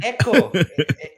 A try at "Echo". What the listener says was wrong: Echo. No, she chews on the vowels. Echo. Echo.